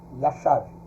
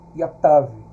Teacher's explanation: Yatav, tá? Porque o shin aqui, ele tem um som de SH ou CH, e no aramaico ele tem um som de T